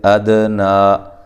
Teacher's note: دی لو واو مدہ ہے، نلذی لام کو موٹا نہیں کرنا اور لمبا بھی نہیں کرنا، ذی یا مدہ ہے، ہوا واو کو ہونٹوں کو گول کرتے ہوئے ادنا، اد دال پہ قلقلہ، نا کھڑی زبر جو ہے الف مدہ کے قائم مقام، ایک الف کی مقدار کے برابر اس کو لمبا کرنا ہے